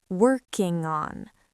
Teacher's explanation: In English, we don't like silence between words. We link the ng to the o